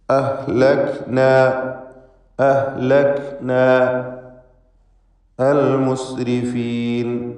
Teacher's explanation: അഹ്ലക്ന എന്നതിൽ അലിഫ് ഇൽത്തിഖാഉ സാക്കിനൈൻ പരിഹരിക്കുവാൻ വേണ്ടി ചേർത്ത് വായിക്കുമ്പോൾ ഒഴിവാക്കപ്പെടുന്നതുമാണ്.